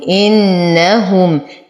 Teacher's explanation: إن، أشد النون غنة أكمل ما تكون، إنهم، وتم ضمة الهاء.